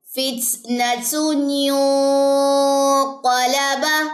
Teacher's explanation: اخفائے حقیقی، نون ساکن کے بعد قاف یہاں پہ غنہ ہوگا